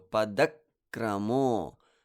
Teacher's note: I give it the heaviness that I need by creating a pause before continuing with kra.